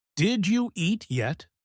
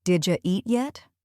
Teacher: Native speakers often blend did you into did ya. So instead of 4 separate words, it almost becomes 2 words.